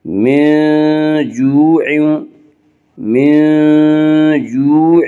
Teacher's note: وا مدہ کو 1 الف کے برابر کھینچ کر پڑھیں گے